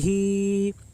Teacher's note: پڑھیں مجہول آواز سے بچیں، ہا کے نیچے کھڑی زیر ہے، کھڑی زیر برابر ہوتی ہے یا مدہ کے، اس لیے کھڑی زیر کو ایک الف کے برابر کھینچ کر پڑھیں